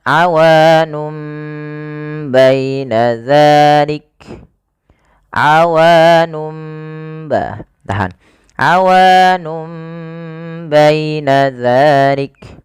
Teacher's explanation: awalnya kan nun diganti dengan mim karena dia bacaan iklab, yaitu nunnya bertemu dengan huruf ba. Awalnya awanun menjadi awanum, maka di sini mim itu dianggap mati saja sehingga bunyi awanum.